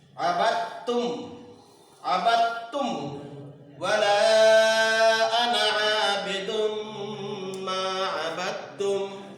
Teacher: دال ساکن کو تا میں ادغام کر کے پڑھا جائے گا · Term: ادغام متجانسین